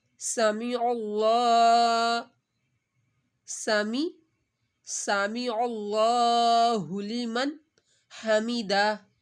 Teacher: اللہ کو موٹا پڑھا جائے گا، اللہ سے پہلے زبر آ رہی ہے، سین کی سیٹی